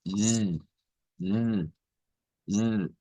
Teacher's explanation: el lingüista le dice a usted, mire, este sonido es el sonido alveolar fricativo sonoro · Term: S vibrante